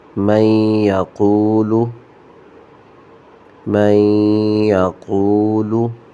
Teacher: قاف کو موٹا پڑھیں گے اور آگے واو مدہ آ گیا ہے تو اس کو تھوڑا سا کھینچ کے پڑھیں گے ایک الف کی مقدار میں